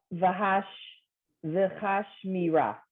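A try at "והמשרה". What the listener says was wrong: Okay, except under the mem is one dot, so that will add another syllable.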